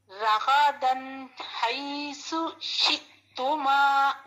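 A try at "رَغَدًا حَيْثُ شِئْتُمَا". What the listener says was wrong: جی اب یہ جو راغا نہیں پڑھنا، یہ را بھی ہیوی ہے، یہ غین بھی مستعلیہ لیٹر ہے، ہیوی لیٹر ہے، ٹھیک ہے. رغدن حیث شئتما.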